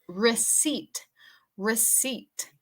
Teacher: la pronunciación de la P es muda con esta palabra